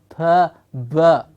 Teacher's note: The sound, original vowel sound a, obstructed by the lips, pa, and it gives you the consonant p or b.